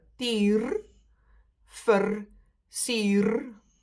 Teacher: As if we are not pronouncing that R that clearly when we speak as a figuur. Sometimes you barely hear the rolling R because we do skip the work